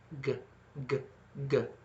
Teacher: A G is very similar to a K, except there's a little bit of an aural quality to it. There's some tone involved.